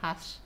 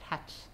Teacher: a sibilant fricative becomes an affricate in word final position. Okay, so from hash you get hatch.